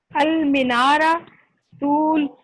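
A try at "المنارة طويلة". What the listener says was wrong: المنارۃ طویلہ. مینارہ نہیں کہنا, المنارۃ طویلہ.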